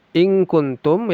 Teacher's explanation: nun sukun bertemu kaf ikhfa. Disamarkan lalu didengungkan.